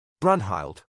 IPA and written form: bɹʌnhɪld (Brunnhilde)